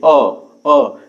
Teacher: बीच में से आवाज आ रही है, यानी जीभ का मध्य वाला भाग कार्य कर रहा है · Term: मध्य स्वर